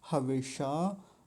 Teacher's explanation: मूर्धन्य शकार का यहाँ विशेष ध्यान रखेंगे